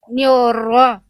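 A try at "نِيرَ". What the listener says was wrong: Niro. melafalkan gini. Niuro. Yang saya dengar Bunda tuh membunyikannya seperti ini bunyinya. Niuro. Tapi artinya niro. Niro. Oke, kita getarkan ro-nya dengan jelas dulu aja. R-nya digetarkan dengan jelas dulu aja Bunda.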